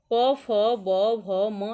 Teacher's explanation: प, फ, ब, भ, म, इसका उच्चारण स्थान ओष्ठ है।